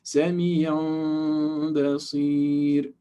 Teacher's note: And we said before that the way to hide the meme is to make the sound, the lips, a little bit open. Don't completely close them, because then it will be a clear meme. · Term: hidden meme